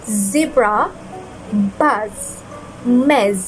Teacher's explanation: Z has a continuous hissing and buzzing · tongue near your Upper Front tee but without touching them next push air through the narrow space creating a buzzing sound keep your vocal cords vibrating · This is a voice fricative consonant. First, place your tongue near your upper front teeth but without touching them.